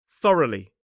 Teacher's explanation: The adverb form has three syllables, still stress on the first. This time that o u g h is pronounced uh it's a schwa.